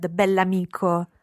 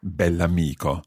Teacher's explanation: it's very important to pronounce the adjective and the noun as one word